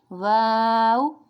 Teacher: یہ ہمارے ہونٹوں کی گولائی سے ادا ہوتا ہے